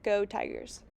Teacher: this would be considered a backward co-articulation because the semi-vowel r influences the s which is voiced as a z